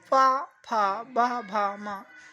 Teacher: पा वर्ग के सारे वर्ण, क्योंकि इनको बोलते समय ओष्ठों को मिलाना पड़ता है